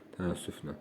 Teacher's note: Təəssüflə sözündə ə düşür. Biri ə uzanır. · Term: səs düşümü